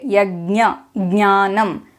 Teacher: We pronounce the ञ sound but we bring in a ga sound before it.